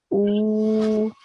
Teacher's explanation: So because this alif has a dhamma, and after that there is a haruful madha, which is the vowel sakin. That's why I make the oo sound, the alif sound, longer. I make it 2 seconds long.